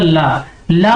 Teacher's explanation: पार्श्विक का मतलब होता है जो हमारे जीभ के पार्श्व वाले भाग से बोला जाए, यानी कि जो हमारे जीभ की साइड होती है ना उससे बोली जाए। आप इसको बोल के देखिए, जैसे मैंने बोला ला मैंने बोला, तो हमारी जो जीभ है उसके जो साइड वाले हिस्से हैं वो काम करते हैं, इसलिए इसको क्या कहा जाता है, इसलिए इसको पार्श्विक व्यंजन कहा जाता है।